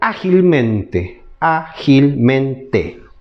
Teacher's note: las estructuras llevan tilde y por último las sobres brújulas que se carga en la cuarta sílaba de derecha a izquierda